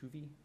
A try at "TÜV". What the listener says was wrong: No, it's pronounced TÜV. Actually has 2 dots on it.